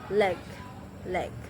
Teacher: Approximate itu adalah ketika organ suara saling berdekatan tapi tidak sampai bergetar, menimbulkan getaran. Contohnya dia merupakan bunyi voice, alveolar lateral dan approximate.